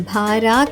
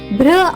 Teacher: బిఆర్ యొక్క శబ్దం భార కాకుండా బ్ర అవుతుంది.